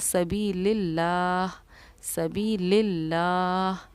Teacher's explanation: یہاں پر دیکھیے لفظ اللہ کے لام سے پہلے کیونکہ زیر آ رہا ہے تو لفظ اللہ کے لام کو ہم نے باریک پڑھا